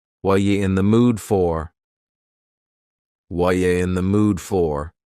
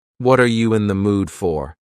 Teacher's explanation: The word r is gone and the word you has been reduced to yah. So when we link together what and you super fast. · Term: reduction